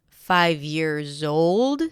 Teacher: 5 years old, stress on old, years in plural.